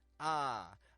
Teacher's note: we get the tongue around the center of the mouth it's not low it's not high it's just around the center